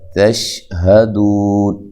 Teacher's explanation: وَأَنْتُمْ، نون ساکن کا یہاں اخفا ہے، تم، تا باریک ہے، میم ساکن کا یہاں اظہار ہے، تشہدون، تا کو باریک، دو و مدہ ہے، ہا کو واضح نکالنا ہے اس کے مخرج سے جو کہ اقصی حلق ہے، اچھا جی۔ یہاں جو ہے آپ نے سٹاپ کرنا ہے، وقف کرنا ہے، وقف کی صورت میں یہاں مد کر سکتے ہیں۔